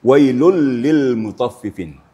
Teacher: Dileburkan suara tanwin ke dalam lam. Artinya dijadikan tasdik dalam bacaan.